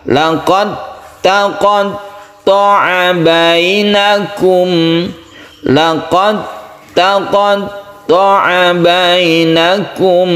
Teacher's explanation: Ya kalau yang ini tetap dikolkolakan, tapi kalau yang bawah ini laqad taqattu'a tidak dikolkolakan karena dalnya telah masuk ke huruf ta. Jadi membacanya adalah laqad langsung tasydid ta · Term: idgham mutajanisain